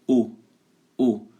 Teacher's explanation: Não é O aberto, é O. Um O fechado, O.